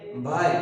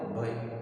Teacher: મધ્ય ગુજરાતના લોકો આઈ ની બદલે ઐય બોલે છે